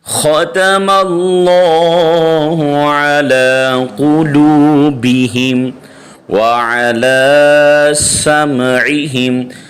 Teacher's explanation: اللہ کے لام سے پہلے زبر ہے تو اس لیے یہاں پہ موٹا کریں گے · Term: لام موٹا